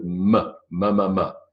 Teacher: bilabial both lips moving together to make the M sound